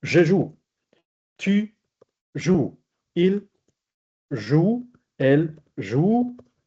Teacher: A pesar de que hay una E que se escribe, porque es la terminación ortográfica, no se pronuncia.